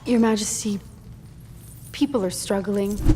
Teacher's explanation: In this case, are is quickly said like er. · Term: connected speech